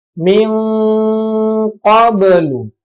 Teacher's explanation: Nun sukun bertemu dengan qaf ya. Jadi bacanya seperti bunyi ikhfa ya. Cuman bunyinya seperti ng ya. Min qablu. Tetap harus ditahan ya.